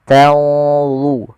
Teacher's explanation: ada nun mati ketemu dha, ikhfa-nya langsung ke dha, agak tebal